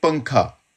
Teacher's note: تو آپ پنکھا کہہ رہے ہیں، نون کو چھپا کے پڑھ رہے ہیں، ظاہر نہیں کرتے پنکھا۔ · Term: اخفا